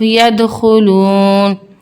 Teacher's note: دال حروف قلقلہ کا حرف ہے اس لیے ہماری آواز پلٹ کر آئے گی